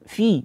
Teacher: jangan sampai keluar suara dari hidung atau disebut dengan dengung ataupun ghunah